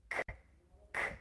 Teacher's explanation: For a C sound, the back of the tongue is pressing against the upper pallet, the soft pallet, closing and releasing.